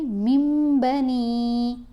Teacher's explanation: نون کی آواز کو میم کی آواز میں بدل کر پڑھنا ہے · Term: اقلاب